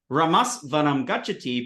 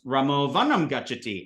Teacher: We know that when AS, short AS, Ramas, meets that radioactive voiced initial consonant, it becomes O. So Ramas Vanam Gachati becomes Ramo Vanam Gachati.